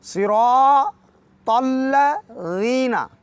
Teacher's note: صراط الذین، جیسے کہ صاد کو موٹا پڑھیں اسی طرح را کو موٹا، اور پھر تا کو بھی بولڈ اور موٹا پڑھیں گے۔ الذین ذال ہے، نرمی سے پڑھیں گے، زبان کو اوپر والے دانتوں کے کنارے پہ لگا کے مختصر صراط الذین لمبا کریں گے چونکہ یہ مدی آ گئی ہے. · صاد کو موٹا پڑھنا ہے، عربی میں اس کو کہتے ہیں تفخیم، اور انگلش میں کہا جاتا ہے بولڈ پڑھنا، موٹا اور بھاری پڑھنا، پرحجم پڑھنا۔